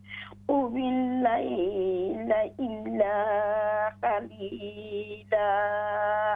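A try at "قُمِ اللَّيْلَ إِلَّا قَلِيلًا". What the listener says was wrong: جی قاف تھوڑا سا موٹا ہوگا. قلیلا.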